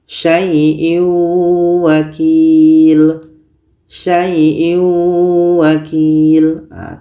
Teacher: Tanwin ini kita masukkan ke waw tapi dia kurang sempurna masuknya. Maka dikategorikan dalam idgham naqish.